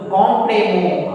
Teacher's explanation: O N and O M, these two will form nasal vowel sound, same nasal vowel sound, identical nasal vowel sound on